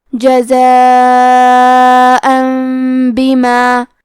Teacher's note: با حروف القلب میں سے ہے، قلب کا معنی ہے بدل دینا، تو ہم تنوین کو ہلکی میم میں بدل کے اور غنہ کے ساتھ یہ حکم کو ادا کریں گے۔